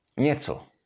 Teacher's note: And the last one is the example with n and s háčkem, and in this case you have to change n into ň